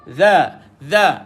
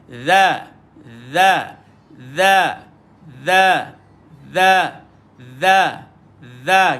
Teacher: Betul lidah keluar. Dha. Lidah pergi kat bawah gigi atas.